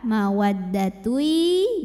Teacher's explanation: disertai bunyi dengung tahan sampai ada suara masuk hidungnya dari mana dengungnya dengungnya bawaan dari tanwin ketika masuk ke ya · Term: idgham bighunnah